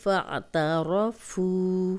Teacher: فا کی زبر عین سے ملے گی، تا را کو موٹا پڑھیں گے کیونکہ را پہ جب بھی زبر یا پیش ہوگی تو را موٹی ہوگی۔ فاعترفوا، فو واو مدہ ہے، جزم والی واو پیچھے فا پہ پیش، 2 حرکات لمبا کریں گے